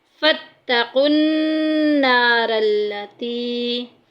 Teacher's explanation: फ़त्तक़ुन नारल्लती, यहाँ पे देखें काफ को नून के साथ मिलाएंगे, नून के ऊपर शद आ गई